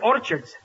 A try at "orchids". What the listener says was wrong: It's not orchards, it's orchids. The CH is pronounced like K.